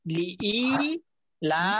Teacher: এখানের মধ্যে দুইটা টান আছে, লিইলা দুটোটাই টান, ইও টান আছে লাও টান আছে